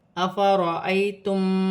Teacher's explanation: را پر زبر ہے، را موٹی پڑھی جائے گی